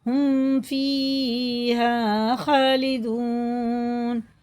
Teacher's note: اس کو غنہ اخفا کچھ نہیں کر کے پڑھیں گے، اس کو اظہار شفی کہتے ہیں